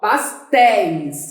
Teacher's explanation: Qual é a sílaba mais forte? É o téis.